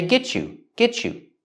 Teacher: I can link the T and the Y, the T in get and the Y in you, and make the sound ch like chicken